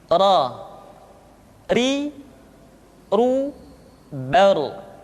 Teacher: Diucapkan dengan menyentuhkan punggung lidah dengan langit-langit. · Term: huruf ra